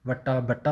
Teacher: ਬੱਬੇ ਦੀ ਜਗ੍ਹਾ ਵਾਵਾ ਬੋਲ ਦਿੰਦੇ ਅਤੇ ਵਾਵੇ ਦੀ ਜਗ੍ਹਾ ਬੱਬਾ ਬੋਲ ਦਿੰਦੇ ਆ